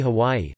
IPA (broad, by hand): ˈhɒvɒi